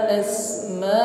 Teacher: panjangkan dua alif 4 harakat atau kita ukur dengan 2 kali ayun